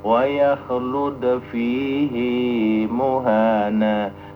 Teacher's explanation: Fihi itu kan biasanya pendek, ini adalah panjang